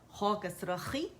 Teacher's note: اچھا, اب خا موٹا ہے فتح کے ساتھ اور دمہ کے ساتھ بھی, لیکن کسرہ کے ساتھ اس کو موٹا کر کے باریک نہیں کرنا, نیچرل وے میں پڑھنا ہے